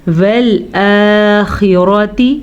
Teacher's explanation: خا کو پر پڑھ لیجیے گا، خا ہمیشہ ہی پر پڑھا جاتا ہے، را کو پر پڑھ لیجیے گا کیونکہ را پہ زبر ہے تو زبر کی صورت میں را پر پڑھا جاتا ہے، زبر یا پیش کی صورت میں۔